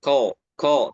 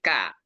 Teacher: tapi ka tipis bukan tebal